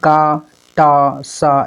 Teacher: बिना कंपन के जो बोले जाते हैं उसको हम लोग अघोष कहते हैं। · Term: अघोष वर्ण